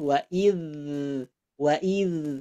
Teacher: keluarnya dari ujung lidah ke ujung gigi